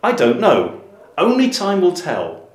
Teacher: the words time and tell are quite strongly stressed and there's a falling intonation